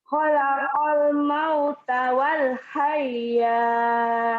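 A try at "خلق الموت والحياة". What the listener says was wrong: Jangan wal hayah, jangan ada tasid. Wal hayah, enggak ada tasid. Khalaqal mauta wal hayah.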